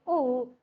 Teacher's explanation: While producing the sound oo, what happens? That is, our lips will be round in shape.